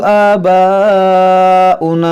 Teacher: الف مدہ کے بعد حمزہ ہے اور حمزہ اسی کلمے میں ہے تو یہاں مد متصل ہے